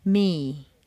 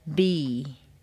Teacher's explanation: the lips come together the air can't get out so it has to come through the nose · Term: nasal consonants